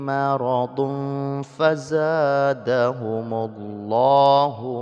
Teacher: tanwin bertemu dengan fa, ikhfa, tanwinnya tetap dibaca tapi sudah dimasukkan ke dalam huruf fa sehingga dia sudah samar-samar